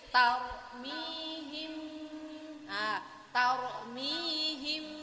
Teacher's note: Jadi kita harus mingkem dulu ke huruf ba. Mimnya mingkem ke huruf ba. Nah, bibir kita dinaikkan sedikit. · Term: ikhfa syafawi